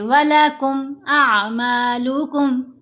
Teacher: میم ساکن کے بعد آ گئی لام، تو دونوں جگہوں پر میم کا اظہار کرتے ہوئے پھر غنہ نہیں کیا جائے گا. یہاں پر اعمالکم ایسے لمبا کر کے پھر نہیں پڑھنا، بلکہ جلدی پڑھیں گے.